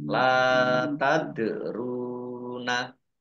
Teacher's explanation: berhenti juga boleh terus lam fathah Alif BII panjang dua harakat Dal sukun bacaan qolqalah dibaca memantul ditampakkan pantulannya